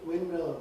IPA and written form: ˈwɪn(m)mɪl (windmill)